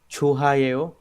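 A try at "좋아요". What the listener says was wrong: জোয়ায়ো। মানে হটা এখানে আসলে তেমন থাকবে না, জোয়ায়ো।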